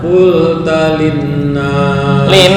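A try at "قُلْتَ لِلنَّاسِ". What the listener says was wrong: Dengunya ditahan lagi. Linnas. Ta pendek. qultalin, bukan qultalin, enggak.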